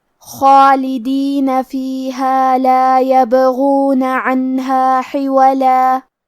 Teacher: غین حروف التفخیم میں سے ہے، لہذا ہمیں یہ حرف کو موٹی آواز میں پڑھنا ہے، اور کیونکہ اس پہ پیش ہے تو ہم غین کو پیش سے پڑھیں گے.